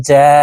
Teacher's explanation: জিম হরফ জিহ্বার মধ্যখান থেকে পড়তে হবে কারণ জিমের মাখরাজ জিহ্বার মধ্যখান থেকে হবে